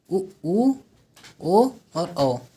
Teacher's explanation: वर्तुल और वृत्ताकार जो गोल होंठ होंगे